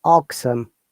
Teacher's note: in British English, as you know, we don't pronounce R